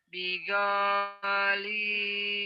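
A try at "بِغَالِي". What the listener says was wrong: O-nya pendek. Yang panjangnya li-nya doang. Go-nya pendek. Bigoli. Bigoli.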